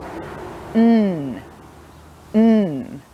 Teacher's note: We're blocking our mouth and it goes up through our nose. So your tongue sits at the top of your mouth, behind your top teeth, but kind of blocking your teeth, so it touches your teeth all the way round.